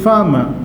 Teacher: according to the british pronunciation they don't pronounce r